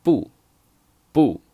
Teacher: the second pronunciation is fourth tone